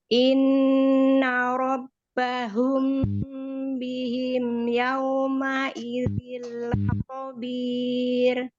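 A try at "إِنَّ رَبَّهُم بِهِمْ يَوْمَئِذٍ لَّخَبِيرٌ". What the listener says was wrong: Sempurnakan lagi harfulinnya, waw sukun sebelumnya fathah, monyongkan. Yau, yau, nah, yau, monyongkan ya, sempurna ya.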